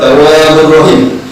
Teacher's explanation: Dibacanya diidghamkan tapi tanpa gunnah. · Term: idgham bil gunnah